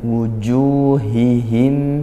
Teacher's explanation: Huruf ha ini dia huruf yang mengeluarkan nafas ya, hames. Dan juga rikhwah ngalir suara, ngalir nafasnya dan makhrajnya cukup jauh seperti hamzah agak berat.